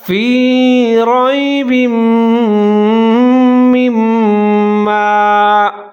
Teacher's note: کے نیچے دو زیر ہیں، آگے میم کے نیچے زیر ہے، میم مشدد ہے، دونوں کو ساتھ میں ملا کے پڑھیں گے، غنہ کریں گے، آواز کو ناک میں لے جائیں گے · وہاں دونوں میم کو ملا کے ناک میں آواز لے جائیں گے